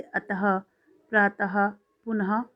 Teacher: शब्द के अंत में जब विसर्गें लगती हैं तो वो विसर्गिक शब्द कहलाता है और इन विसर्गों को बोलने के लिए ह की ध्वनि का प्रयोग होता है